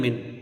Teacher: نون ساکن کو ظاہر کر کے بغیر غنہ کے جلدی پڑھیں گے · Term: اظہار حلقی